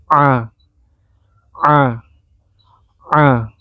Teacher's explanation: Cara sebutnya a, agak ditekan di bagian kerongkongan bagian atas. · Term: huruf a